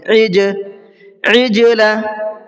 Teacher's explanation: ان حروف میں سے کسی پر بھی اگر جزم آ جاتا ہے تو اس کی آواز کو ڈبل کر کے پڑھتے ہیں ہلکا سا، تو یہاں پر ان میں سے ایک جیم بھی ہے، جیم آ رہا ہے اور اس کے اوپر جزم بھی ہے، تو جیم کی آواز کو ہلکا سا ڈبل کر کے پڑھیں گے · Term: قلقلے